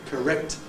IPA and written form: kəˈrekt (correct)